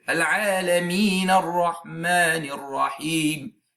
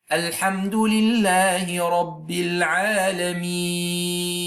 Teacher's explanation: It is a lengthening because of a contextual unvoweled letter coming after the letter of mad. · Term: Mad Arid L-Sukoon